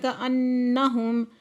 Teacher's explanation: کأنہم، نون مشدد ہے، غنہ واجبہ کریں گے، پھر میم ساکن ہے، اظہار شفوی ہوگا۔